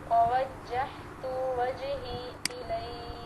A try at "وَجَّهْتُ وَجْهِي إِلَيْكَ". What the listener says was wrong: اس تا کو لمبا نہیں کرنا، ٹھیک ہے. ووجہت وجہی الیک